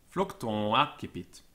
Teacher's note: The final M was probably absorbed into the preceding vowel, which was nasalized when it's followed by a vowel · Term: nasal vowel